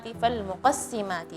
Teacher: tipiskan sinnya, jangan sampai sin terpengaruh dengan suara harful qaf yang tebal